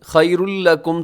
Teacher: تنوین کے بعد لام ادغامی یرملون غنّے کے بغیر